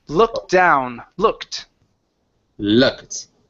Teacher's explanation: ed ending. This this will sound like a t.